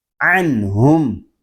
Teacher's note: عین حلق کے درمیان والے حصے سے ادا ہوگا. جب ہم عین کو ادا کریں گے تو حلق ہمارا تھوڑا سا گھومے گا